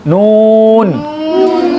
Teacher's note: नून पर तो ज़बान के नोक तालु पे लगेगी, वापस आगे फिर वापस तालु पे, नून।